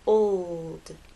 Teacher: the o to the L and finally into the D old it's important to make the L long enough so that it's heard